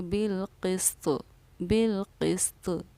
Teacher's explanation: اور طوا پر جب جزم آ جاتا ہے تو وہ حروف قلقلہ بن جاتی ہے، اسی لیے طوا کی آواز بھی لوٹے گی۔ ہم اس کو پڑھیں گے بالقسط، بالقسط۔